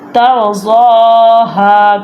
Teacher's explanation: کھڑی زبر ہے زواد کے اوپر، تو اس لیے زواد کو اور ہا کو ہم لمبا کریں گے